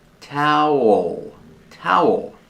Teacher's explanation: The second syllable has a dark L with a tongue near the back of the mouth.